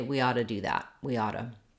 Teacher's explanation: in most cases that those t's together connect and we say them like a medial t a flap